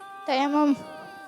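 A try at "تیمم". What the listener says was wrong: तयम्मुम। अच्छा, ये कह रहे हैं तयम्मुम। तयम्मुम, यहाँ पे तशदीद नहीं है, मीम पे। हाँ भाई, और कोई नहीं, तो ये है तयम्मुम। हाँ, तयम्मुम नहीं है, या पर नहीं है, यही बताना था।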